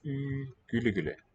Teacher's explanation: my tongue is forward and the lips are round